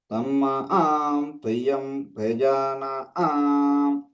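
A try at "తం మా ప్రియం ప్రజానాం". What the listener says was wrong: తమ్మా సున్నలేదు. తమ్మా ప్రియం ప్రజానాం.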